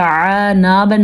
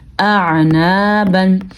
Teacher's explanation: آپ نے دھیان دیا ہوگا کہ ہمارے گلے میں سے عین کے ساتھ ساتھ حمزہ کو ہم نے واضح کر کے الگ کر کے پڑھا ہے, کیونکہ حمزہ اور عین دونوں کی آوازیں بالکل ایک دوسرے سے مختلف ہیں.